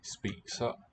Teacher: The vowel is cut off somewhere before you get to the S.